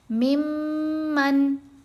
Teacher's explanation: میم کو میم سے ملاتے ہوئے ہم نے غنہ کیا